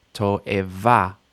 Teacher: don't lose that final stress just because there's 3 syllables